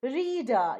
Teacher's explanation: you have the first r being pronounced and the last r not being pronounced